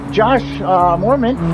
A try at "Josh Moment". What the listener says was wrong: I think it's Josh Moment. Is there an R in there? It's Josh Moment.